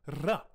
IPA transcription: r